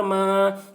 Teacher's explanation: الف سے پہلے زبر ہے، الف مدہ ہوا، اس لیے الف مدہ کو ایک الف کے برابر کھینچ کر پڑھیں گے